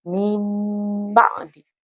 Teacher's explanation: maka nunnya diganti menjadi huruf mim. Jadi cara membacanya adalah mim ba'di. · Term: iqlab